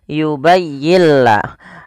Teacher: apabila ada ada nun mati bertemu lam, suara nunnya kita hilangkan dan kita masukkan langsung kepada huruf lamnya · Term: idgham bila gunnah